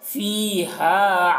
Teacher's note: ایک الف کے برابر دونوں کو کھینچیں گے، فی کو بھی اور ہا کو بھی.